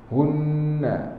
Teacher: hunna dengung paling tinggi martabat dia, sama panjang dah, dengung akmal